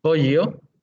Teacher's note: El pollo palatal, la elle es una palatal, ponemos la lengua cerca del paladar sin tocarlo y el aire sale por los lados de la lengua